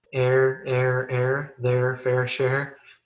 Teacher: I pronounce the vowels the same air air air their fair share but they're spelled in three